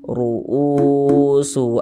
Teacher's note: Mad badal panjang 2 harokat. 2 harokat itu kira-kira sepanjang 2 ketukan.